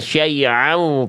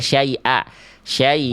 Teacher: Saking fasihnya Bunda melafalkan huruf hamzah jadi ain syaiu. Padahal hamzah aja Bunda.